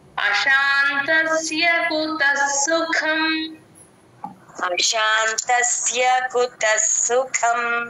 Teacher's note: సుఖంలో కం క కి మహాప్రాణం ఉంది